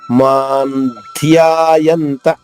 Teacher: నాలుగో చరణము మాన్ధ్యాయంత ఉపాసతే మాన్ ఇక్కడ చూడండి మా తర్వాత సున్నా ఉంది సున్నా అని ఏ ఆ ఉచ్చారణ పొల్లు నాలా చెప్పాలి ఎందుకంటే దాని తర్వాత ద అనే అక్షరం ఉంది కాబట్టి మాన్ ధ్యాయంత ద కి వత్తుంది మాన్ ధ్యాయంత నా కి త